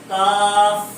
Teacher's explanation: اعلیٰ اقصائے زبان کا مطلب یہ ہے زبان کی جڑ سے اوپر کا حصہ جو سینے کی جانب، زبان کی جڑ سے اوپر کا حصہ جو سینے کی جانب، یہ اقصائے زبان اس کے مقابل اوپر کے تالو سے لگے گا. کاف کا مخرج اسفل اقصائے زبان اور اس کے مقابل اوپر کا تالو. اسفل اقصائے زبان زبان کی جڑ سے نیچے کا حصہ جو منہ کی جانب ہے.